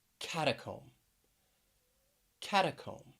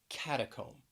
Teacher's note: three syllables stresses on the first syllable